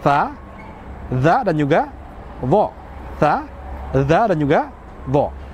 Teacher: Ujung lidah yang dimana punggung ujung lidah kita ini ya dia itu bertemu dengan gigi seri langsung. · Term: tarful lisan